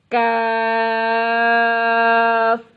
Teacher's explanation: کاف زبان کی جڑ اور تالو کے سخت حصے سے ادا ہوتا ہے۔